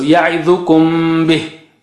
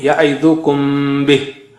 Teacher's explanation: hiding of meme sakina when it is followed by ba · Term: hiding meme sakin